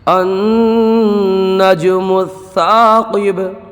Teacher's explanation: نون میں گنہ ہوگا اور جیم میں قلقلہ ہوگا۔ یہاں پر الف میں مدہ ہوگا، قاف کو پر پڑھیں گے، اور با میں قلقلہ ہوگا